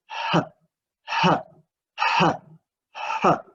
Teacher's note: the last place of articulation is glottal, which connected with glottis